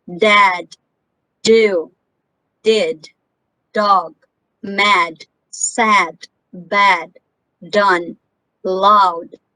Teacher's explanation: the paper is not moving because this is not a puffing sound this is voice i can feel it only in my vocal chords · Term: voiced d sound